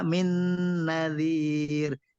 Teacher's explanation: gunahnya itu panjangnya 3 harokat. Jadi dipanjangkan.